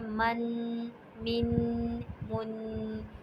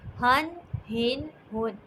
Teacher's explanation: ان پر میں نے غنّے کی آواز نہیں نکالی بلکہ میں نے انہیں اظہار کر کے پڑھا ہے